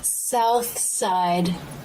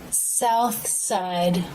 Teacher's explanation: the unvoiced th linking with the s sound south side tongue tip comes through the teeth for the th